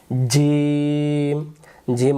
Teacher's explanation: জিম শক্ত করে জিহ্বার মাঝখান থেকে। জিহ্বার মাঝখানটা উপরের তালুতে লাগবে। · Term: জিম অক্ষর